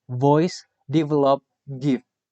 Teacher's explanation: The description of v is voiced labiodental fricative.